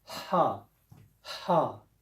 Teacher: This letter Ha is a heavy Ha, comes from the top of the throat. Ha, Ha. It's not your easy hello H.